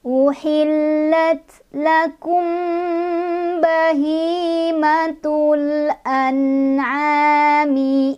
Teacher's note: Mim ketemu ba, ikhfa syafawi, jadi kita bunyikan dengungannya ya